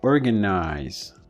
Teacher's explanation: So this one, organize, even though it wasn't stressed, you see, organize. In organize, the or was a stress.